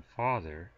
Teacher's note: the A as in father is considered a low vowel